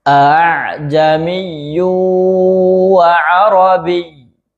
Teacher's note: Hamzah yang kedua di tashil bacanya ee dipermudah ya. Hamzahnya tidak ditahkik dan hamzahnya cara bacanya mudah ya seperti diseret. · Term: tashil Hamzah, tashil hamzah